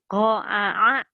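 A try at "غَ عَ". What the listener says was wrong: Tuh, itu mah ain dua-duanya. Nih dengerin ya. Go a gitu. Pokoknya mah kalau latihan tadi itu a ari, kalau ain ari gitu. Bedakan kan beda.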